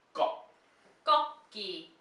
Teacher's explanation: Now this one is also a tensed G sound at the beginning. That double G sound.